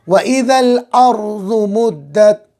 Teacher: تو را ساکن کا قاعدہ یہ ہے کہ را ساکن سے پہلے والے حرف کو دیکھیں گے، اگر اس کے اوپر زبر یا پیش ہو تو را پر، اور زیر ہو تو باریک۔ تو یہاں پر را سے پہلے والے حرف کے اوپر زبر ہے تو را کو بھی پر پڑھیں گے